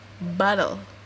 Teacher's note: the weak second syllable contains no vowel at all, but consists entirely of the consonant. We call this a syllabic consonant.